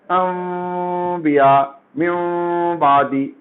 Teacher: ہونٹ پورا ملائے بغیر میم کی طرح آپ پڑھیں گے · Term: قلب